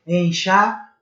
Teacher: Mas na fonética, na forma de escutar a palavra, é como se tivessem aí duas semivogais com uma vogal. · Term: tritongo nasal